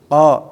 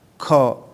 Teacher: Qa ujungnya si ujung lidah ke atas ya. Untuk ka turun ke bawah ada hamesnya.